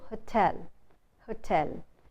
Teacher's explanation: Whereas the stress is supposed to be on the second syllable, hotel, not hotel, but hotel. It's the second syllable which is stressed, and you don't say tell, you say tell.